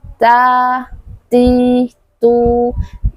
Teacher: harus ada hembusan udara ketika kita mengucapkan huruf ta